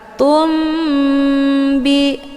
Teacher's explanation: Cara bacanya, mimnya ditekan kemudian ditahan lebih kurang 2 kali ketukan. Tumbi. Jadi mim ini sudah menjadi agak samar-samar. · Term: ikhfa syafawi